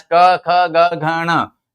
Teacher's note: ये क निकलता है आपके कंठ से निकलता है